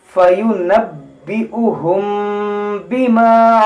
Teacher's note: یہاں دیکھیں میم ساکن کے بعد با, یہاں پر اخفاء شفوی کا قاعدہ لگے گا, یعنی یہاں پر غنہ کریں گے